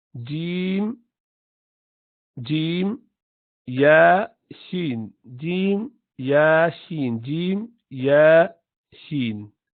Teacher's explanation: the 3 letters that you pronounce from the center of the tongue touching the top are Jim, Ya, Sheen.